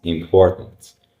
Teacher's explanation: T. Sound disappears, replaced by the throat catch. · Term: glottal stop